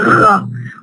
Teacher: the uvular R, the Gha, which is similar to our Arabic ghain. The uvular Gha, and we find this hatta Israelis language have got lots of Gha, but we have it in Paris, the Parisian Gha.